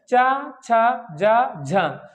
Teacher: जीभ हमारी क्या है, तालु को स्पर्श कर रही है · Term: तालव्य ध्वनियां